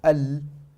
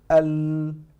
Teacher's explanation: And then when you say al, so I'm actually pronouncing the lam, but I'm using my nose. So al.